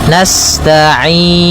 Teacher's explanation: Sifat sinnya sempurnakan dengan mengalirkan nafasnya